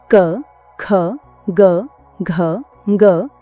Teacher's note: यह सभी व्यंजन कंठ्य कहलाते हैं क्योंकि इनका उच्चारण कंठ यानी गले से होता है।